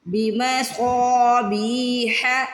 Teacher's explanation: صاد کو موٹا بھی پڑھنا ہے، صاد کو کھینچ کے بھی ادا کرنا ہے